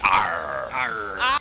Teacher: And every R is very, very lengthy. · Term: pirate accent